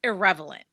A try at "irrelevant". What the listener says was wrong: Irrelevant. Irrelevant. You just added an extra syllable. It sounded like it was like, no, that is the word. It sounded like that was supposed to be the word.